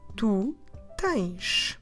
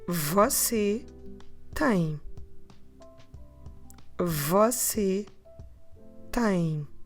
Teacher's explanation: So no sh at the end this time. That makes the difference between the informal tens and the formal tem.